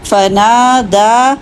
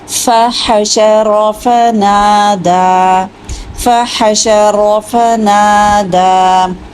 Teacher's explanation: نا اور دا دونوں دو دو حرکتیں